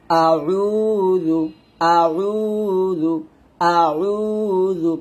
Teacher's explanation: এই জালের উচ্চারণটা জিহ্বার আগা উপরে দাঁতের আগা লাগাতে হবে, নিচে দাঁতে লাগালে কিন্তু ভুল হবে। আউযু আউযু আউযু, পাতলা।